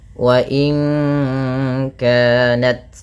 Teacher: nun mati bertemu kaf suaranya disamarkan ke kaf ya terdengar bunyi wa inka langsung kepada makhraj huruf ka yang di mana kaf makhrajnya pangkal lidah kita di pangkal lidah.